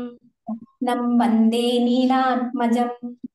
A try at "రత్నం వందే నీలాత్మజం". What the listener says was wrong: మీరు నీలాత్మజం అన్నారు, నీకి దీర్ఘం లేదు అక్కడ, నీ.